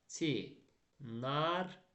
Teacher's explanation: Sonra l samiti r-dan sonra gəlsə, onda l r-ya çevriləcək.